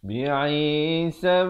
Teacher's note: Sab, sa bari atas terus naik di atas ba yang bertanda sukun, diberikan lantunan kerana ba merupakan huruf qalqalah